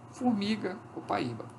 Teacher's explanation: O O assimila esse traço de altura do I e se torna U. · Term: assimilação